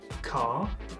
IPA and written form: kɑː (Car)